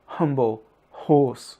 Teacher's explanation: En anglais, comme en allemand, la lettre H résulte en un très fort souffle, comme dans humble, horse.